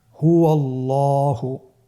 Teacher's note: এখানে আল্লাহ শব্দের দ্বিতীয় লামটি মোটা হবে